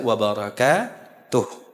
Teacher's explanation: Karena berhenti, yang asalnya wabarakatuhu dibaca wabarakatuh. Disukunkan haknya.